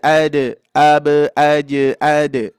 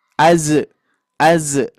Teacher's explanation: yang harus hati-hati itu jimnya jangan sampai menjadi Zai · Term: huruf Jim